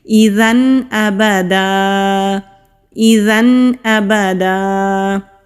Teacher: وقف کہتے ہیں سانس اور آواز دونوں کو روک کر پڑھنے سے رک جانا، تو جب رکیں گے تو اس کو ہم ایک الف کے برابر کھینچ کر پڑھیں گے اور ایک زبر کے ساتھ پڑھیں گے